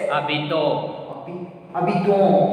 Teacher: Why? Because s is silent and o n will make nasal vowel sound o